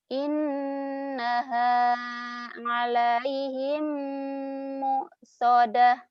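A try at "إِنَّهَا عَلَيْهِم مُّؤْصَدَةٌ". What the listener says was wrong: Mentang-mentang ustazahnya orang Jawa ngalaihim. Jangan ngalaihim atuh. Ngalaihim. Alaihim ya. ain.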